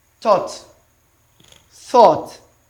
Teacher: um dental and voiceless The Voice less than that sound so you put the tip of your tongue at the back of your upper teeth and you blow the sound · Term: dental sound